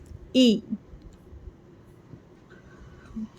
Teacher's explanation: जाती है तो क्या करना है आवाज नीचे करनी है और आवाज नीचे करने के साथ ही हमारे होठ भी जेर वाले हर्फ को पढ़ते वक्त फैल जाएंगे